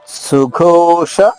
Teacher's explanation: సుఘోష మహాప్రాణి ఘ ఓత్వంతో అంటే దీర్ఘమైన ఓకారంతో సుఘోష. ఉషాలో పలికే షానే పలకాలి ఇక్కడ.